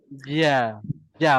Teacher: Tengah lidah naik ke atas.